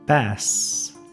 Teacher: nota que la lengua viene arqueada para dejar el s continuar